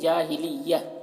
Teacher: جب وقف کریں گے تو یہ گول تا جو ہے یہ ہائے ساکنہ بن جائے گی تو جاہلیہ ہو جائے گا، جاہلیتی نہیں، جاہلیہ۔